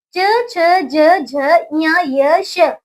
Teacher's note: ये बच्चों तालु है इनका स्थान और ये तालव्य बोले जाते हैं